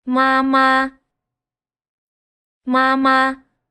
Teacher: they're both the same tone. Both māma, both high flat tones.